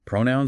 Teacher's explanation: Pronoun stress on the first syllable